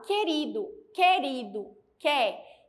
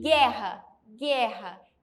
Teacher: Eu quase não pronuncio o som do U.